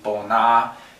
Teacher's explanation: it's actually a long flat tone